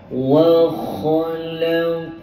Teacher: Kita pindah ayat ke-8. Wa kha, pastikan kha ada bunyi getaran